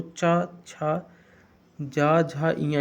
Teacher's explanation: यानी आपके तालुओं से निकली हुई ध्वनि, तालु के संघर्ष से निकली हुई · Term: तालव्य